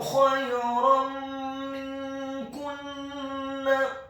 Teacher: Kata khayran minkunna, huruf kha-nya dibaca tafkhim, tebal, dan wajib untuk diserahkan fathah 1 harokat.